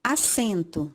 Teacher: A sílaba tônica está na segunda sílaba, sem.